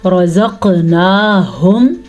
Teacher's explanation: قاف کے اوپر کلکلا ہو رہا ہے کیونکہ قاف کے اوپر ساکن آ گیا ہے